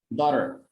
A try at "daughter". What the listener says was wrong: That's perfect.